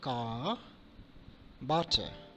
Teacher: Letter R in British English at the end of the word remains silent. So CAR, there is no pronunciation of or sound of R we can hear from the British native speakers.